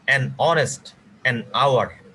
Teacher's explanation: এই এইচটা উচ্চারিত হচ্ছে না, এটাকে আমরা বলি যে অনুচ্চারিত এইচ।